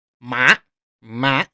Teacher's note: it is a falling tone falling quickly from five all the way to one